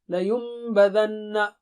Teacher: لینبذن، نون میم سے بدل رہا ہے، وہاں پر غنہ ہوگا